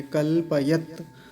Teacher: तकार पर हलंत है तो वहीं रुक जाएंगे